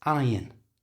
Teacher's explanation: in the word iron the r you can see is followed by a vowel sound but the r is silent it's the only time that it happens so it's not I